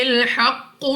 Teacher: قاف مستعلیہ میں سے ہے، پر یعنی موٹا پڑھنا ہے منہ اور آواز کو کھول کر، اور قلقلہ مشدد ہے تو خوب جماؤ کے ساتھ ادا ہوگا.